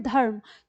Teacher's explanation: र की जो ध्वनि है वो कम है क्यों कम है क्योंकि र जो है वह आपका आधा है · तो जैसे ही आप बोलते हैं धर्म तो आप ध्यान दीजिएगा जो र है वो बहुत जल्दी बोलता है र हम पूरा र नहीं बोलते